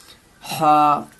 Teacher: जो हा है इसको हल्क से निकालनी है, हा, और इस हा को हा ही बोलनी है।